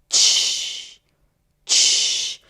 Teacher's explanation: So you block the sound with a T, but instead of releasing it, t, you're releasing it into the closest fricative, ch. So basically it's like a T and a sh sound together. Ch, ch. And that's the voiceless, consonant, ch. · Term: post-alveolar affricate